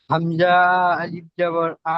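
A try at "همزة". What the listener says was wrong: হামজা বলে টানলেন কেন? হামজা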